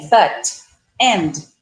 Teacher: é comum o brasileiro colocar esse i nosso, né, no caso, ao final da pronúncia de palavras que cortam com consoante